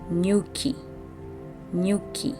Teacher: So N and Y, in Swahili, it's never a separate syllable